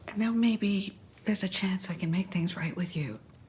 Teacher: I like it how she stresses the U at the end.